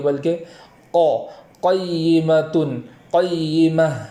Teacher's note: اور آگے والا قیمتن جو کلمہ ہے اس کے اندر قاف کو پور کریں گے، پور کرنے میں ہونٹوں کا سہارا نہیں لیں گے، قیمہ ایسا نہیں پڑھیں گے بلکہ قیمتن، قیمہ اس طریقے سے پڑھیں گے۔